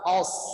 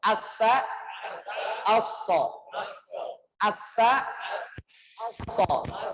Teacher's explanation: Jadi bedanya kalau sin itu digelar begini, lidahnya itu di gitu jatuhnya. Kalau sod diangkat, os, ya, tebal. Karena sifatnya isti'la.